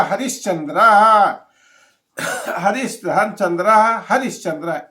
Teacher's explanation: हरि विसर्ग के बाद च आया है तो तालव्य स हो गया